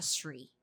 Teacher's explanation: Her soft /th/ is not very clear. Sounded more like a sree.